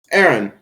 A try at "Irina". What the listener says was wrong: Erin, pronounce the I.